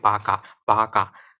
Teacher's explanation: যে ব্যঞ্জনধ্বনি উচ্চারণের সময় ঠোঁট দুটি কাছাকাছি এসে বায়ু প্রবাহে বাধা সৃষ্টি করে, সেগুলো হচ্ছে ওষ্ঠব্যঞ্জন